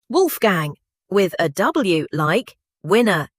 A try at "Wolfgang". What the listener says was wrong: And that right there is the mistake. In German, W is pronounced like the English V. Wolfgang.